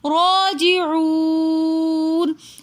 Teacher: راجعون میں رو کے اوپر کھڑا زبر ہے تو اس لیے اس کو ہم رو کھینچ کر بھی پڑھیں گے اور موٹا کر کے پڑھیں گے. راجعون میں واو ساکن اور اس سے پہلے پیش تو واو مدہ ہونے کی وجہ سے ہم پڑھیں گے راجعون. · راجعون میں واو ساکن اور اس سے پہلے پیش تو واو مدہ ہونے کی وجہ سے ہم پڑھیں گے راجعون. واو مدہ کے بعد آگے نون ساکن آ رہا ہے تو حالت وقف میں اس کو تھوڑا سا زیادہ کھینچ کر پڑھتے ہیں